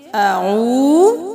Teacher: واو مدہ ہے تو اعو، ایک الف میں برابر واو کو کھینچیں گے